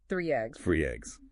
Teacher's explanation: a Y sound between three and eggs